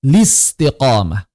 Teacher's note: boleh dibaca tanpa a langsung ltiqomah